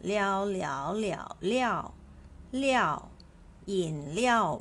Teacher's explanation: pronounced as Liao with the fourth tone